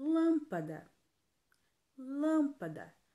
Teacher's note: lâmpada lembrando que toda a palavra proparoxítona ela é acentuada então lâmpada a antepenúltima sílaba é a mais forte consequentemente ela vai ser classificada como proparoxítona